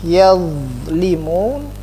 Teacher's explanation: Kalau dha itu adalah zal ditebalkan, jadi dha.